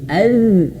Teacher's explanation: ujung lidah menyentuh ujung gigi seri atas atau digigit az. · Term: makhrajnya